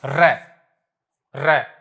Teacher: जीभ 3 या 4 बार उठ करके नीचे गिरती है, इसलिए इसको बोलते हैं प्रकंपित।